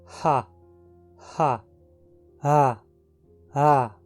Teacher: é só o ar passando com um pouco mais de intensidade pelas pregas vocais